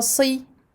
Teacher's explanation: On emphatise bien le sad.